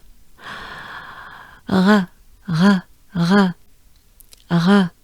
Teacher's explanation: So yes, again, we have the French R, the R. Remember, it's just a breath. You keep your tongue down in your mouth.